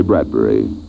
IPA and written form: ˈbrædbɛri (Bradbury)